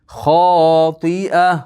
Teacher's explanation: Xoti'a xo yo'g'on ikki harakat miqdori cho'zish bor.